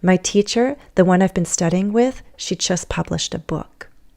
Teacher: I'm rising and then I go with falling intonation to give my main message